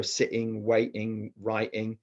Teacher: they were glottalizing their T's throughout